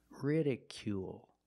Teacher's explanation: Make the long oo sound plus the dark L at the end of the word.